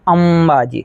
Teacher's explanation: તો અંબાજીમાં પાછળ મ ઉચ્ચાર થાય છે અનુસ્વારમાં અંબાજી તો ત્યારે તમારે એમ લખવો પડશે અને જો અંકુર જેવું